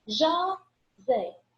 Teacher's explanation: oxítona, porque ela tem a última sílaba tônica, a última sílaba mais forte